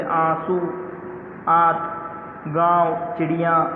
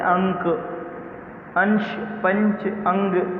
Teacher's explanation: जिसमें चंद्र बिंदु होता है वो होते हैं अनुनासिक, और जिनमें बिंदु होते हैं वे होते हैं अनुस्वार। अनुनासिक में जो है नाक से कम ध्वनि निकलती है और मुंह से अधिक निकलती है, जबकि अनुस्वार में नाक से अधिक निकलती है और मुंह से कम निकलती है।